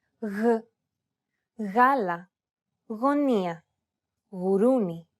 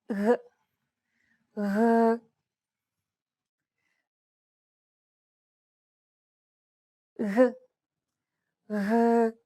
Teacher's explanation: this sounds like a soft, continuous G sound. The G should be held very loosely, enough so that your tongue and the back part of your mouth are barely separated from each other. Blow a steady stream of air between the small separation.